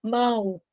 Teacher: mão o o tem som de u quando o o tem som de u Ele é semivogal e